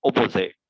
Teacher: as i said to you in london uh cockney rhyming sound we do not even pronounce t so in the london cockney driving sound it will be opposite